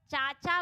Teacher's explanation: चाचा बोलते समय होठ नहीं मिल रहे हैं, तो यह तालव्य वर्ण होगा